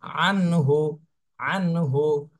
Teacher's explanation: তাহলে এটা হলো নুন সাকিনা এর পরে ইজহারের হরফ আসছে এজন্য এই নুন সাকিনে স্পষ্ট করে পড়তে হবে কোন গুন্না করা যাবে না